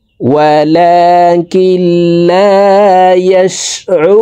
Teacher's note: রু এখানে 3 আলিফ টানিয়ে নুনকে সাকিন করে ফেলবো, কারণ মদের হরফের বামের হরফে ওয়াকফ হইলে মধ্যে আরজি 3 আলিফ টানিয়া পড়িতে হয়।